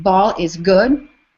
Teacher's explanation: the troic lines are truncated. So, we're missing that last unstressed beat